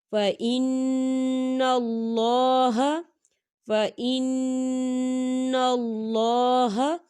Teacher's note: یہاں پر نون مشدد ہے تو یہاں پر غنّہ ہوگا، اللہ کا نام جو ہے موٹا پڑھا جائے گا، پر پڑھا جائے گا، کیونکہ اللہ کے نام سے پہلے زبر ہے، تو ہم اسے باریک نہیں پڑھیں گے، ہم اسے موٹا پڑھیں گے۔